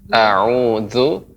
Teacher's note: Dia menggunakan lidah, ujung lidah dengan gigi seri atas.